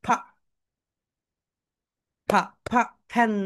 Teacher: যখন তোমরা এফ উচ্চারণ করবে তোমাদের উপরের দাঁত নিচের ঠোঁটের সঙ্গে হালকা টাচ করবে